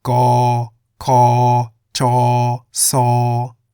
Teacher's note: The low and middle class consonants are pronounced in the middle tone.